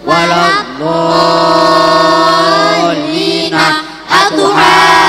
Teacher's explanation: Mad tabi'i bertemu tasydid, panjangnya 3 alif atau 6 harokat. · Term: Mad lazim musaqqal kalimi